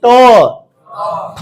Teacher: ট বর্গের উচ্চারণের জায়গাকে বলছি মূর্ধান্য ধ্বনি · জিহ্বাটা উল্টে গিয়ে ঠিক মূর্ধখানে লাগতেছে